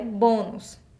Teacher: Porque a nossa sílaba tônica é o bo e é um som fechado.